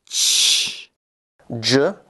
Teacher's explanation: J, as in the first and last sound in judge, is a voiced palato-alveolar affricate.